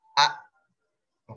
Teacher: karena suara daripada huruf hamzah ini tertahan